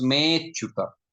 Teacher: Me plus achyuta becomes me chuta. So that a gets assimilated with me, which is called purva rupa sandhi